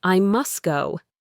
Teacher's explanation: drop sounds, especially the T and D sounds, when they are stuck between two other consonant sounds. It takes too much effort to pronounce them.